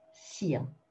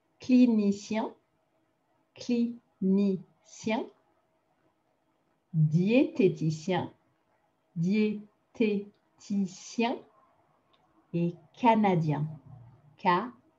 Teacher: Sien is what we're looking for at the end with that nice nasally un